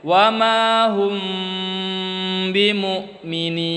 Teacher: Wa ma hum ditahan. Dia samar-samar di bibir. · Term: ikhfa syafawi